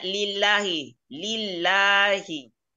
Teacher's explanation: namanya lam jalalah jadi caranya dibaca ini dibaca tipis